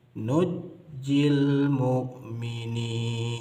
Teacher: nun sukunnya diidghamkan kepada huruf jim sehingga jimnya menjadi bertasydid. Nunji dibaca nujji seperti qiraat Imam Ibnu Amir dan Imam Asim dari jalur riwayat Imam Syu'bah.